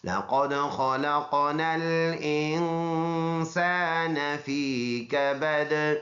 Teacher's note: انسان میں پھر ناک میں آواز لے کے جائیں گے ، سین میں سیٹی ہے اور یہ الف مدہ ہے، نون · ادا کریں گے، کبدین ہے، وقف کریں گے، دونوں زیر سائلنٹ، تو یہ دال سائلنٹ سکون والا ہو جائے گا تو اس میں قلقلہ ہوگا